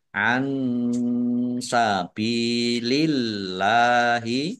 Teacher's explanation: Nun sukun bertemu dengan huruf sin, bacaan ikhfa, dibaca samar-samar. Ba kasroh ya sukun, mat tobi'i, panjang 2 harokat. · Allahnya dibaca tipis karena harokat di depannya kasroh.